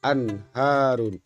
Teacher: Nun mati bertemu dengan salah satu huruf halki berupa ha, maka cara membacanya bunyi n pada nun mati harus dibaca jelas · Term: izhar